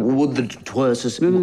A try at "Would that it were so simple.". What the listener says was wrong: No, you seem to be lingering. It's interminable, the were. I'm wondering when it'll end.